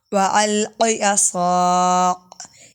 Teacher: یہ کاف باریک ہے اس لیے کاف ادھر کلکلا نہیں ہوگا